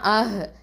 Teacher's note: இந்த ஹம்சா வந்து அக்கசல் ஹல்க்கு கீழ்த்தொண்டை, ஹ வந்து அதுவும் அக்கசல் ஹல்க்கு கீழ்த்தொண்டை. ஓகேவா, அப்போது ரெண்டுமே அந்த ஒரே இடத்துலேருந்து தான் வரக்கூடிய எழுத்துக்கள்.